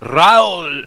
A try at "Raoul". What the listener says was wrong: No, he rolls it more. He's like, Raoul.